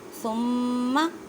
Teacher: مینس کے آواز کو ناک میں لے کے جانا ہے اور ظاہر کرنا ہے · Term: گنہ